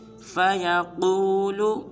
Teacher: اس حرف میں قاف کو پر ادا کریں گے